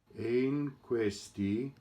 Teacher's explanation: the E is closed in the word e and in the word questi.